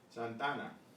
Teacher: because we have two vowels and they're identical, they blend together and sound as one.